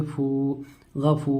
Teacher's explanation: ज़बर की आवाज़ ऊपर को उठती है, जैसे गा वाव साकिन से पहले पेश हो तो वावे मद्दा होता है। वावे मद्दा को एक अलिफ के बराबर खींचकर पढ़ेंगे, जैसे फू, गफू।